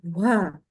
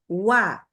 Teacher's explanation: Dari segi nafas dia tidak terhembus. Baik waw dan ya, yang disebut jahar. Tidak ada suara terhembus nafas.